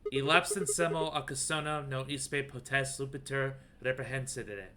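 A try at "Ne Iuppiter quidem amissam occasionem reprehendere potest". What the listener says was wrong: It's not Spanish. Don't pronounce it with a Spanish accent.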